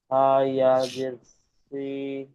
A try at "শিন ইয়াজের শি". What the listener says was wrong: শিন সা নাই, শিন ইয়াজের শি।